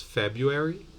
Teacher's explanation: you might omit the schwa and the r